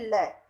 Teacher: जीभ का अग्रभाग मसूड़ों को स्पर्श करे और हवा जीभ के किनारों पार्श्व से निकल जाती है। हम बोल के देखें ल, तो देखो जो जीभ का आगे का भाग है वो मसूड़ों को स्पर्श कर रहा है, और जो मुंह के अंदर से जो हवा निकलती है वो जीभ के दोनों किनारों से बाहर निकल जाती है। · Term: पार्श्विक वर्ण